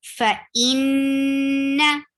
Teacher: whenever noon and meme with tashdid, it will get longer gunna.